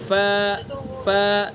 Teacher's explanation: فا کا مخرج زبان ثنا علیہ کا کنارہ نیچے کے ہونٹ کا تری والا حصہ